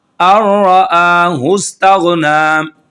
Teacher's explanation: لام اور را ہے، یہ بغیر ادغام غنہ کے پڑھے جائیں گے، بغیر غنہ کے پڑھے جائیں گے۔